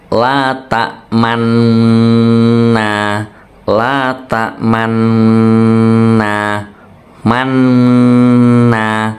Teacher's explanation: ini macucu di tengah-tengah dengung ya, sebagai isyarat bunyi dumah ya. La ta'manna, jadi macucu di tengah manna. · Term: ismam